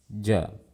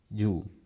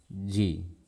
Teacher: Kemudian sifat yang kedua, syiddah. Suaranya tidak dialirkan. Artinya, saat berharokat, suara huruf jim dan suara harokatnya berbarengan. Jadi saat kita ingin melafalkan huruf jim, tempelkan dulu sebelum kita lafalkan.